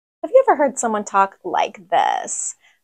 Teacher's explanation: This way of speaking is known as vocal fry or creaky voice, and it's surprisingly common.